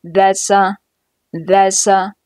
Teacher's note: that's▁和▁a▁两个词辅元连读